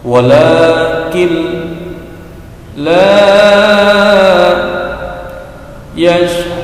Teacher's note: ada kin menjadi kil, walakin menjadi walakin la, ada nun sukun bertemu dengan huruf lam. Lam ini merupakan salah satu huruf dari yang 2 lam ra pada idgham bila gunnah.